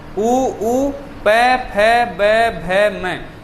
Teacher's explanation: क्योंकि प, फ, ब, भ, म, उ इनमें किनका काम होता है? ओष्ठ ही काम में आते हैं, या ओष्ठ आपस में क्या करते हैं? स्पर्श करते हैं। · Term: ओष्ठ्य वर्ण